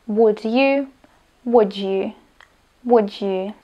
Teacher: Kombináciou fonémy d na konci slova a j na začiatku následujúceho slova vzniká nový zvuk, a to dž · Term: asimilácia